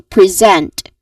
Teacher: the sound it creates is a buzzing sound which is the letter Z sound which is a voiced sound